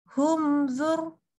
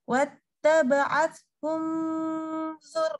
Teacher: kita baca mimnya itu jelas. Jelas em, enggak pakai dengung. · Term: izhar syafawi